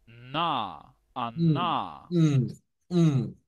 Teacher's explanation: Cuando hacemos la N se encuentra en el alvéolo. Dentro de nuestra boca, el alvéolo es la carnita que está acá.